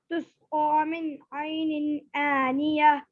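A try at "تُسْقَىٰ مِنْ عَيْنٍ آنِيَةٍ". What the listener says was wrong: ऐनी, आनिया, सीधा आनिया बोलिए। जी, या के बाद हा साफ बोलिए, यह।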